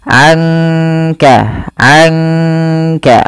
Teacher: dibaca samar-samar Dibaca dengan ada sedikit mendengungkannya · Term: bacaan Ikhfa